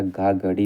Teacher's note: कंठ महाप्राण घोष व्यंजन वर्ण का उदाहरण